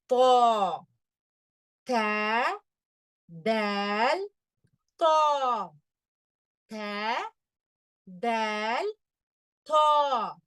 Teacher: நம்மளுடைய நாக்கை தடிமனாக்கி அதே மேல் ஈறுகளை வந்து தொடணும் மேல் பற்களினுடைய ஈறுகளை தொடணும் ஆனா இது ஹெவியா இருக்கணும் ஏன்னா இது ஹெவி லெட்டர் தா தால் தா தால் தா சரிங்களா அல்ஹம்துலில்லாஹ்